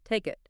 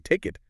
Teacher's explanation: native speakers link the final K sound in take to the I sound in it. So it becomes take it like one smooth unit.